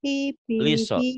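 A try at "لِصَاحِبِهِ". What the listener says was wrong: bukan iso. Bukan iso, liso, li ya. Liso. Liso, li.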